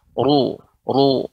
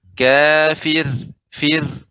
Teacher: Jadi seperti itu, harus perhatikan ketika ro yang berharokat dhammah dibaca tebal. Ru, ya. Tapi ketika disukunkan, ya jadi tipis.